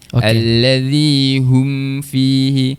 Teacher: Mim huruf mim ni dia tidak bersifat syiddah, tidak bersifat tertahan. Dia tawasud. Lajakkan sikit. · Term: tawassul